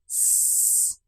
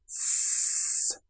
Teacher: How do you make the sound? Teeth close together, air being pushed through, S, and the tongue quite close behind the teeth.